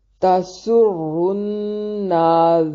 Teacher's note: تا کو بھی باریک اور سین کو باریک سیٹی کے ساتھ ادا کریں گے